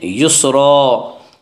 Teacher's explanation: 2 زبر پر وقف کرنا ہو تو ایک زبر کے ساتھ الف پڑھا جاتا ہے، یسرن سے یسرا، ان مع العسر یسرا، فَإِذَا فَرَغْتَ فَانصَبْ، فَإِذَا، الف مدہ، الف ہمیشہ مدہ ہوتا ہے، الف سے پہلے ہمیشہ زبر ہوتا ہے، الف مدہ کو ایک الف کے برابر کھینچ کر پڑھیں گے۔